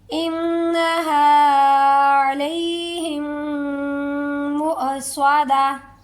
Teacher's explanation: سادہ جھٹکا، عین کی آواز نہیں آئے گی، عین کا ساؤنڈ نہیں آئے گا، حمزہ کا ساؤنڈ نکالیں